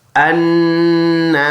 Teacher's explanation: نون مشدد 1 الف کی مقدار ناک میں آواز لے کے جائے گی، غنہ کریں گے